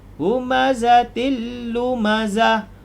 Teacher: lagi tapi idgham bilagunnah masuk tanpa dengung wailul likulli humazatil humazatil tanwin bertemu dengan lam juga idgham bilagunnah